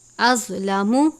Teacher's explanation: ضا بھی حرف مستعلیہ میں سے ہے جسے ہمیشہ پر یعنی موٹا پڑھا جاتا ہے